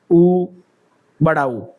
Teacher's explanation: ओष्ठ, यानी कि होठ का प्रयोग, प, फ, ब, भ, म, उ, बड़ा ऊ, यानी कि आपके ऊ के अंदर आपके होठ गोल हो रहे हैं